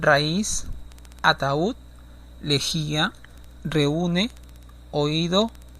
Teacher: de vocal abierta a vocal cerrada también bajo la misma condición la vocal cerrada tiene que tener la mayor fuerza sonora en esa sílaba